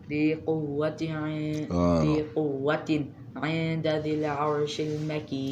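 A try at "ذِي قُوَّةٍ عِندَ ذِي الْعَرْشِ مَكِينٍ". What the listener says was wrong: Okay, so you said the last word in this. I hear a qamariya sound. So you said qamariya. So is it a qamariya word?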